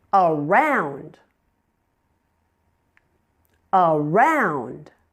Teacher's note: the second syllable is the primary stress syllable. Round is louder and longer with a clearly understandable vowel sound.